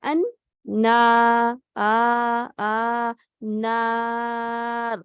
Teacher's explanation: نون کی جو الف مدہ ہے وہ باریک پڑی جائے گی